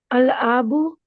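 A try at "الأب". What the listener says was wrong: आ क्यों? आ क्यों है? अल अबू, अबू उर्दू में नहीं बोलते, अबू बोलते हैं ना। आबू तो नहीं बोलते ना। हाँ, अल अबू, अबू बोलती हो ना, अबू। आबू तो नहीं बोलती हो। अल अबू, आगे।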